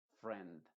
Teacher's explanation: en esta palabra se está pronunciando con su sonido modificado que es una e